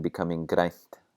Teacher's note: We get a voiceless N before the T